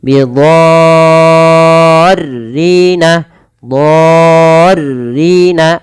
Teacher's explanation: Dha di sini wajib dipanjangkan 6 harokat, teman-teman. Bukan lagi 4 atau 5. Tapi 6 harokat. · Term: mad lazim